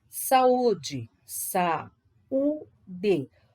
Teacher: U tônico formando hiato com a vogal anterior